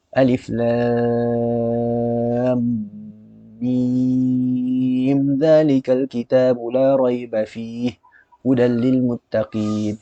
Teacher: Mim zalika. Jadi tak dengung. Izhar syafawi. Mim mati bertemu zal.